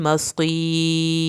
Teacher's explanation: ये रा भी पतला पढ़ा जाएगा, साकिन हर्फ और उससे पीछे फिर हमने देखा कि ज़ेर वाला हर्फ है तो हमने रा को पुर नहीं करना।